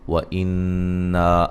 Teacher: نون مشدد پہ غنہ غروری ہے